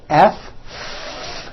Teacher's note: Okay, now let's look at the F sound, where you're biting down on your lower lip. Is that a voiced sound or an unvoiced sound? It's unvoiced. Your vocal cords are not vibrating.